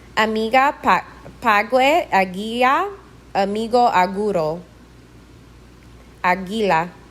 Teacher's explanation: it's like G as in girl but said as if you have a sore throat you let the air come through the passage instead of stopping it